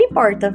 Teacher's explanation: costumamos utilizar a variante retroflexa alveolar vozeada em palavras que são grafadas com a letra R, ao final da sílaba